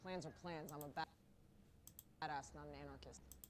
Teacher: Her voice is kind of, deep and raspy for a woman, but she still sounds feminine.